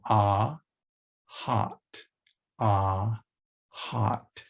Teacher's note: Then is the first mid vowel. So the jaw is as wide open as it's going to get in producing a vowel.